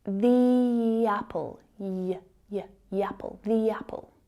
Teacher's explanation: In order to link words together, speak with a natural flow, and speak quickly, native speakers will add a little y sound between those vowel sounds. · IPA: /j/